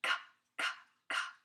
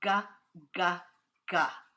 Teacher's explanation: one is a whisper sound, like ka, ka, ka. And the other is a mega sound, like this one, ga, ga, ga. · if you feel your tongue in the back hit the roof of your mouth, the back of your mouth, you can feel the k and g are made in the same place